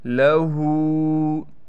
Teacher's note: ہا پر الٹا پیش ہونے کی وجہ سے ہا کو ایک الف کی مقدار کھینچیں گے